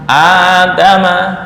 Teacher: kedua mati maka cara membaca menyesuaikan dengan harakat Hamzah yang pertama jika Hamzah yang pertama fathah ini dibaca panjang